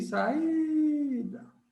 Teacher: Isso aqui você tem um hiato. Um A separado de um I. Isso é um hiato.